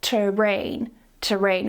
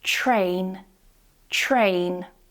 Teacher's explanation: I want you to change that T sound into a ch, okay? Like in choose, cheese, choice, okay? We're going to combine that with the R, so it becomes train, train.